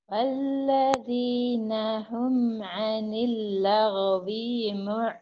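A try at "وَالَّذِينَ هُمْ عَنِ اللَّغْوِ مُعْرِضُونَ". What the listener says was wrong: Pendek winya. Laghwi mu.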